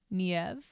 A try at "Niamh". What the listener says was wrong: There's not a V in that name. Niamh.